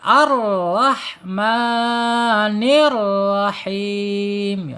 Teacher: Tebal ya tebal dan getarannya sedikit ya dua saja tidak boleh melebihi lagi dari dua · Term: takrir